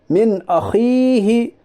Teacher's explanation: یعنی نون ساکن کی آواز کو ظاہر کر کے بلا گنا کے جلد پڑھیے، اسے اظہار کہتے ہیں. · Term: اظہار حلقی